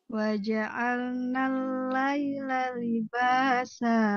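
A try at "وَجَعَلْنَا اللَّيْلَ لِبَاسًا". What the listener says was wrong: Nah, nalnya agak menekan sedikit. Waja'alnal. Waja'alnal laila libasa.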